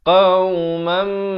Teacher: Di sini sekali lagi idgham bi gunnah. Asalnya qauman, bila bertemu mim jadi qaumam, tetapi didengungkan 2 harakat.